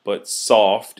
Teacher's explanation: you can hear the emphasis on soft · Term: stressed syllable